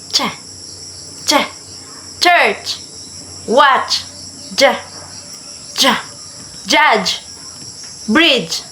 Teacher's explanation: it's a combination of a plosive and fricative in one sound. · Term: affricates